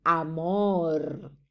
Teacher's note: Nosotros no le ponemos, ¿verdad?, una pronunciación muy intencional y intensa esa R, sino que la relajamos tanto que tiende a aparecer una L